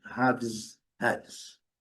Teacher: A diferença aqui é mínima, mas o que eu quero destacar é o final, o final do plural com S com som de Z